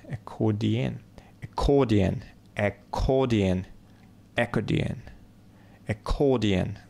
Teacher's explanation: ударение на второй слог